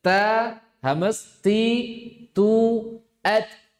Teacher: Ta itu hames, siddah, istifal infitah. · Ta memiliki sifat 1, hamas. Hamas itu keluar nafas.